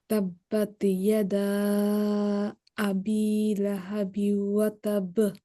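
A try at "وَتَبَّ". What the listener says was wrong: লাহাবিউ নাকের অনেশ্বরের আওয়াজ মানে নাকের একটা গুন্নার আওয়াজ আসতেছে না তাব্বাত ইয়াদা আবি লাহাবিউ ওয়া তাব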